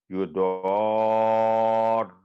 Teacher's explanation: تو یہاں پر جو الف پر بڑی مد ہے وہ 4 سے 6 سیکنڈ آواز لمبی ہوگی، لیکن اس کو عام اردو کے جو تلفظ و تعلیم وہ نہیں پڑھا جائے گا، بلکہ دو کی آواز لمبی کرنے کا سائن ہے. یضار، پھر را پر سارا وزن رکھ کے تو تشدید اس کی ادا کی جاتی ہے